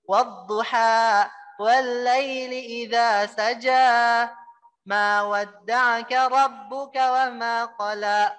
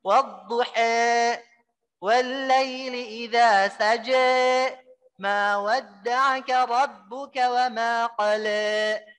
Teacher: Kalau Imam Warsh ini membaca wadduha dengan imalah, ya. Fathah yang mendekati kasrah. Jadinya dia membacanya bukan seperti ini.